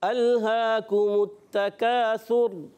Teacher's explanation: काफ का मखरज होता है ज़बान की जड़ और तालु का सख्त हिस्सा, और ता को बारीक पढ़ेंगे, काफ को भी बारीक रखना है, सा की अदायगी क्लियर रखनी है।